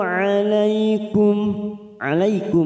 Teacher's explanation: mim sukun bertemu ya Idhar syafawi kita baca jelas